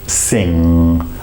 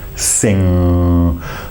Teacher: to say the word sing and bring the tongue back sing the back of the tongue is basically massaging what we call the soft palate